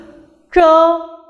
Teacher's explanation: careful to turn your tongue towards the back CH here CH is an unaspirated sound and the air flow is therefore very weak